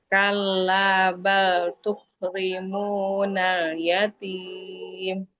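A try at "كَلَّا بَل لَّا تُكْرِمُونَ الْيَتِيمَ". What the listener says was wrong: Lanya kurang Mbak. Kalabala.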